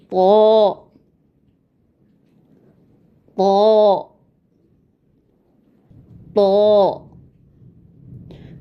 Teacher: दो हर्फी है इसलिए इसको हम बहुत ज़्यादा नहीं खींचेंगे, सिर्फ दो हर्फ जितने में अदा हों